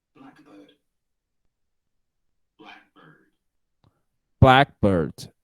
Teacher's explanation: The stressed syllable is black.